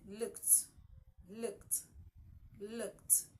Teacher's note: Ed at the end of look, the ed, looked, looked, looked. It has a T sound at the end, not a D.